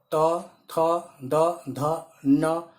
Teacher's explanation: तवर्ग जो है ये दंत के स्थान से उच्चारण होता है